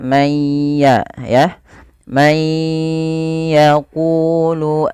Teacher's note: cara bacanya nunnya masukkan ke huruf ya